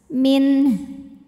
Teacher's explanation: kemudian di sini ada hukum tajwid namanya izhar halqi sebabnya karena nun sukun menghadapi huruf halqi atau huruf tenggorokan yaitu huruf ha maka nun sukun ini dibunyikan dengan n jadi tetap jelas